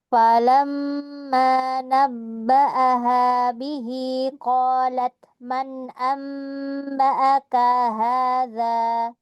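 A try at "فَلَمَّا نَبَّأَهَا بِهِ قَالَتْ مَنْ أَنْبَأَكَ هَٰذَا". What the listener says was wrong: Falamma mau tempo ghunahnya lebih lama lagi sedikit ya. Karena di sini apa? Ghunah akmal ya.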